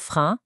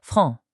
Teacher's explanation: Think about franc, it's a very flat sound. Now, compare that to front, which is round and forward. You're using a completely different set of muscles.